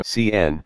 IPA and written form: ˈsiːnə (Cena)